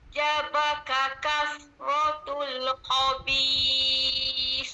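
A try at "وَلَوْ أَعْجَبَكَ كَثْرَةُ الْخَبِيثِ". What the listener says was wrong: Jangan tekan. Jangan apa-apa bagi tekanan pada suara. Biasa saja n bacaan biasa. Jangan puan terlampau tekan.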